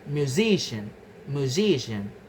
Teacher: The stress moves to the syllable immediately before the suffix ian. The stress shifts from the first syllable mu to the second syllable si right before ian.